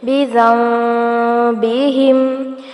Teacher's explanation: یہاں نون پر اقلاب ہو رہا ہے یعنی نون کی آواز کو میم میں بدل کر پڑھیں گے